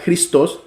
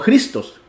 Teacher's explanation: se pronuncia cristos con el énfasis en la o y no cristos como sería en español que haciéndole el énfasis